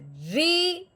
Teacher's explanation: रॉ के नीचे जेर है, रॉ को हमने मोटा नहीं बारीक करके पढ़ना है